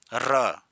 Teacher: र जब बोलेंगे ना तो जीभ गोल होकर लुड़क हुई निकलेगी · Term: लुंठित